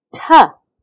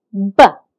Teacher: the last sound of foot ta is a voiceless sound it doesn't have any voicing and the first sound of ball ba is the voice sound now the voicelessness from the the influences the voicing of ba